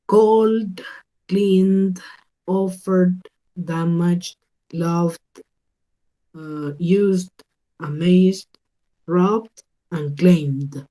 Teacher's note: Yo voy a hacer sonar esa parte final como una D